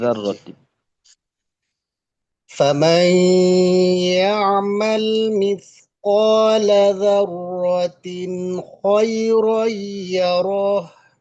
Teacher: এখানে গুণনা হবে না, জি ইজহার,